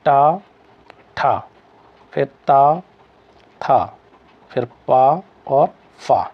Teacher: प्रत्येक वर्ग का पहला और दूसरा वर्ण किसके अंतर्गत आते हैं अघोष के अंतर्गत आते हैं